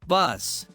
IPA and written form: bʌs (bus)